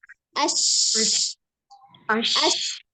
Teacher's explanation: shin yang titik 3 adalah tengah lidah bertemu dengan langit-langit tengah.